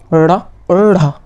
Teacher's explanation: इन उत्क्षिप्त में बोलने में ऊपर तालु में जीभ एकदम नीचे से तालु में लगाने के बाद जीभ एकदम तुरंत दंत पर एकदम पटकती है